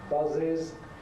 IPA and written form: ˈbʌzɪz (buzzes)